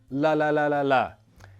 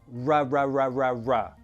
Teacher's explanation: The tongue doesn't touch anything in the mouth. It's only the lips that make the R sound. Think of it like a tensed, awkward, kissy mouth and then relax it.